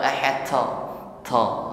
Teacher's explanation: Sifatnya syiddah itbaq, kuat tekanan hurufnya dan tebalkan pengucapannya.